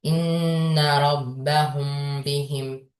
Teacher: Əgər səkin mimdən sonra bə hərfi gələrsə, ə, bə hərfi gələrsə, bu zaman ixfə şəfəvi qaydası baş verir. Yəni mim hərfi bə hərfində gizlənəcək və 1,5 hərfi miqdarından qunna ilə oxunacaq